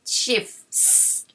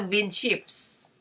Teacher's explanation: I don't think it's supposed to be pronounced the T sound because it's very hard. So just pronounce the S sound at the end